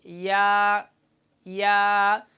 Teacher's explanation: آخر میں حمزہ اور ہا کی آواز نہ ہو اور زیادہ لمبا بھی اس کو نہ کیا جائے